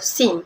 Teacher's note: Seterusnya, geseran gusi tidak bersuara S di awal kata.